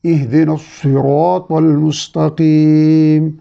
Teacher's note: اب اہدی ہاں حلق کے نچلے حصے سے ادا ہوگا